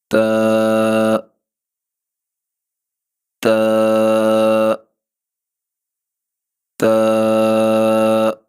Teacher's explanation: زبان کی نوک آپ کے سامنے اوپر والے جو 2 دانت ہیں ان کی جڑ سے لگے گی اور وہاں سے باریک آواز میں تا تا تا۔